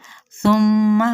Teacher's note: میم پہ غنہ کرنا ہے اور حرکت کو لمبا نہیں کرنا